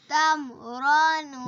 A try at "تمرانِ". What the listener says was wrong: نہیں تم را تم کلکلا نہیں کرنا. غنہ بھی نہیں کرنا.